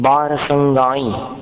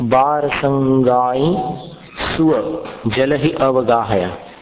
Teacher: गाई ई के ऊपर अनुस्वार है, उसका उच्चारण अनुनासिक जैसा है।